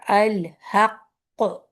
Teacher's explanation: کرتا ہے کہ آپ نے شد ادا کیا، جیسے الحق، حق، آپ مخرج پہ پہنچے تھوڑی دیر اسٹے کیا، پھر آپ نے اسٹے کی وجہ سے آواز آپ کی بند رہی مخرج میں، اور پھر آپ نے کلکلا کو ظاہر کیا